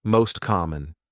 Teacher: T disappears the words are linked together